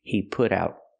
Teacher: we hear the T in put pronounced as a fast D.